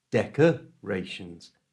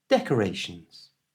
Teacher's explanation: change the A to the little schwa sound